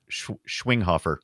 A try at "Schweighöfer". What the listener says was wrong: Is it? It's not. I don't think the You don't say the G. I don't think you don't go